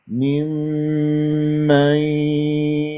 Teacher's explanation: انا اختلست الغنه مع الميم المشدده واجيبها براحتي بهدوء